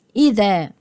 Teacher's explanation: طيب إذا، الذال إخراج طرف اللسان، والألف مد طبيعي حركتين مفتوح ما قبلها